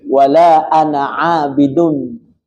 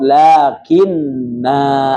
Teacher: Sifrun mustatil atau bulatan lonjong adalah sebagai isyarat boleh dibaca 2 cara. Ya, tanpa mad ketika wasal dan dengan mad tabi'i ketika waqaf